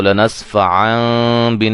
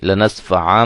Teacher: نون کو میم میں چینج کر دیں گے